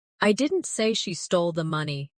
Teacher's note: Emphasize I. I didn't say she stole the money. Meaning someone else said it.